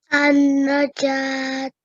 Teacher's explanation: You really held well on the nasal sound for the nun guna there.